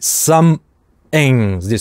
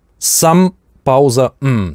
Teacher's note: Здесь интересный случай, some-ing, вот здесь гортанная смычка. TH замещается на гортанную смычку, потому что something это function word, и оно может редуцироваться так. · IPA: [ˈsʌmʔm]